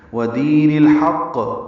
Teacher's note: کو الحق کے لام سے ملا دیں گے، اظہار قمری ہوگا، حا وسط حلق سے ادا کریں گے · واو ہونٹوں کی نا تمام گلائی سے ادا کریں گے